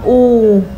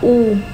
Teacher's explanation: a long vowel sound, make a lip into a circle. Và là cái mỏ, và cái môi của mình, làm cái môi của mình nó ở trong cái vòng miệng của mình.